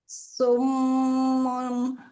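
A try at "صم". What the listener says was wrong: Nah, waktu su kita monyong, waktu mim dua bibir harusnya kembali. Sum kembalikan dua bibir.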